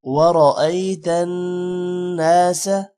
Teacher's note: را موٹا ہوگا، نون پر غنہ ہوگا۔ يدخلون، دال پر قلقلہ جبکہ خا موٹا ہوگا۔